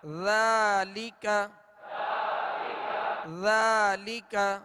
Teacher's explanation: ذال کو نرمی کے ساتھ ادا کرنا ہے، اس میں بالکل سیٹی کی آواز پیدا نہ ہو.